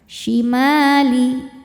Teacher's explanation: Karena ada alif didahului harakat fathah dan lamnya tidak disukunkan. Maka mim ini kalau diwasol hanya boleh dipanjangkan dua harakat. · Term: mad thobi'i